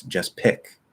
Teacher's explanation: I'm going to push that P out because it's at the start of a stressed syllable.